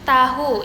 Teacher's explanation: apicoalveolar ini melibatkan ujung lidah yang ditempelkan pada gusi. Nah, seperti contoh pada gambar ini, panah atas ini menunjukkan ujung lidah dan panah bawah itu menunjukkan gusi. · Ini merupakan letupan tak bersuara.